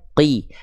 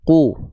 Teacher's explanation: Ya, bunyi vokalnya adalah u. Maka huruf qof di sini enggak kita baca qo, enggak kita baca qi, tapi dia mesti dibaca qu ya. Harus dibaca mengikuti harakatnya. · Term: harakat dhammah, harokat dhammah